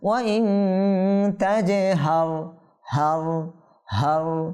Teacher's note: রয়টা কি হবে? পুর হবে, কারণ র সাকিনের পূর্বে জবর আসছে।